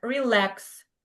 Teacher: So we pronounce lex the second syllable is stressed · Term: word stress